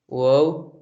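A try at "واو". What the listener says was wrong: En persan, nous disons tout simplement vav. On ne dit pas wa, on dit v, v. Ça se prononce un peu plus fort que l'arabe ou même français.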